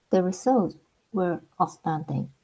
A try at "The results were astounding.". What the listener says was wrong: Yeah, that's pretty good.